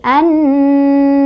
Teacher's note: alif lamnya nggak dibaca. Jadi kita langsung baca ke huruf syamsiahnya, ke nunnya ya. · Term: alif lam syam siyah